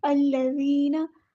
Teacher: अल्लज़ीना कलमे का जो हमने स्टार्ट लिया है, आगाज़ किया है वो हमज़तुल वस्ल से किया है तो यहाँ पे ज़बर लगेगी। अल्लज़ीना ज़ाल को बारीक नरमी से अदा करना है।